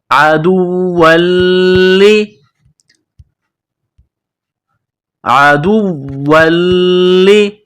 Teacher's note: گلے کے درمیان سے زور لگا کر عین کو نکالیں گے